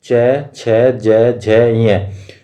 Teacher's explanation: वो आती है ताल्लु से आती है। तालु को जीभ के ऊपर वाले हिस्से को हम तालु बोलते हैं। तो इनको तालव्य ध्वनि भी बोलेंगे।